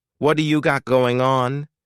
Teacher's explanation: This is really typical of American English, where a T that's surrounded by vowel sounds is going to change to a D. It's called a flapped T, and it just rolls off your tongue in a smooth way.